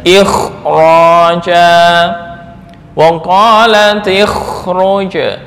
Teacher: Jadi bacanya lebih tebal kha ya? Lebih tebal kha, kemudian setelah kha sukun ada ra berharokat fathah atau dhammah. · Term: tafkhim